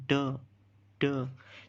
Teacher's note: जो हमने पीछे जो अल्व्यूलर रिज डिस्कस किया था, तो ये इस साउंड में यूज़ होता है, इसकी जो प्लेस ऑफ आर्टिकुलेशन है वो अल्व्यूलर रिज है।